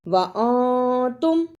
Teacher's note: نون ساکن کی آواز کو تھوڑی دیر ناک میں چھپا کر غنہ کرنا ہے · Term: اخفا